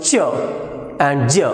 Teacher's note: So that is what is called as a combination of stop and fricative. Affricate begins as a stop and release as fricative.